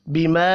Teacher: چھوٹی مد ہے 3 الف کے برابر کھینچ کر پڑھیں گے